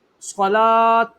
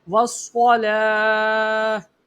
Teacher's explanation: یہ جو تا ہے یہ حرف کے آخر میں ہو تو یہ ہمیشہ ہا ساکن میں تبدیل ہو جاتا ہے